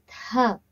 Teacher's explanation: Tha, mahapranam, with more pressure, with more volume in the air that you expel out